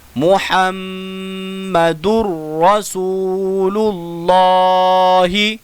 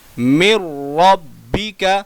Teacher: تنوین کے بعد را آ گیا تو یہاں نون ساکن تنوین کا ادغام ہوگا